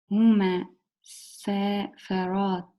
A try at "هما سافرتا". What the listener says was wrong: سافرتا. And don't make it sound like there's a shadda on the mean. هما, it's هما. هما سافرتا.